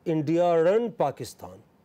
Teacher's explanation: in standard varieties of British English, particularly, India and Pakistan can be pronounced as India and Pakistan. This R appears. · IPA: / indijərən(d)pakistan /